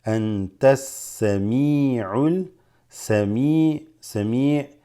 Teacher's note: Anta, innaka, antas, because this drops, alif lam goes straight into the seen